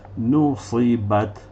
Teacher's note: تا کے اوپر سکون ہے، تھوڑی سی ہسنگ ساؤنڈ